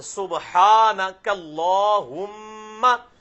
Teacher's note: میم پہ تشدید ہے تو غنہ ہوگا کم از کم ایک الف کے بعد